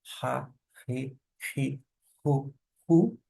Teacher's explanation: ele vai soar como um H na palavra house, um sonzinho aspirado, ha, re, ri, ru, ou ainda equivalente ao nosso R bem fraquinho, ha, re, ri, ru.